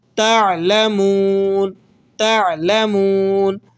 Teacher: عین حروف حلقی میں سے ہے اور یہ حلق کے بیچوں بیچ سے ادا ہوتا ہے